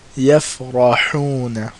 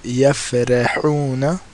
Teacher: And if someone said yafrahuna, that would be incorrect because the Ra is heavy because of the fatha